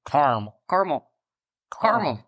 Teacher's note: the western half of this country apparently pronounces it with 2 syllables, completely ignoring the second A and saying Caramel.